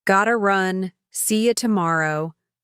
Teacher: The stress was on run and tomorrow. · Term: stressed words